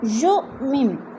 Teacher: حمزہ ساکنہ ہے، جھٹکا دے کر پڑھیں گے